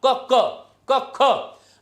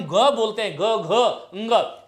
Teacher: संगीत सा सुनाई देता है, एक स्वर तंत्री में कंपन हो जाता है। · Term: घोष